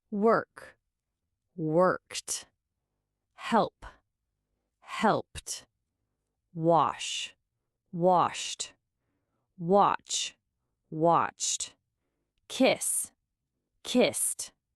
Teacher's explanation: you end with a strong t sound and absolutely do not add an extra syllable